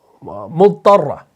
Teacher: ضاد ہے اور طا ہے, دونوں حروف آپ کے کیا ہیں؟ مفخم ہیں, موٹے پڑھے جانے والے ہیں